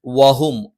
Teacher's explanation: വ ചുണ്ട് വൃത്താകൃതിയിൽ. ഹ തൊണ്ടയുടെ താഴ്ഭാഗം.